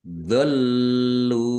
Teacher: Lamnya ada tasdidnya dibaca double, ditekan dan ditahan biar tampak double.